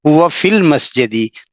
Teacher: वो कह रहे हैं कि the word फी, फी has a long vowel ई, but when it is followed by al, जिसके माने होते हैं दी, e is shortened because in Arabic long vowels are not followed by a consonant which has no vowel